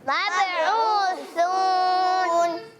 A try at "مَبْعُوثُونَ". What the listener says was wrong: اچھا نون کو ادا کرتے وقت نون چلا جائے گا. مبعوثون, پتہ نہیں چلا. مبعوثون.